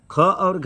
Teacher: महा का मतलब होता है बड़ा, प्राण मतलब वायु शक्ति। अत्यधिक वायु शक्ति की आवश्यकता उच्चारण में हो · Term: महाप्राण